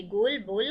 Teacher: ओ में ओठ गोल हो जाते